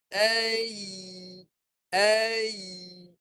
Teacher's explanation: Ya, kalau nak bunyi, tengah lidah naik. Kalau tak naik tengah lidah, dia bunyi macam tu lah.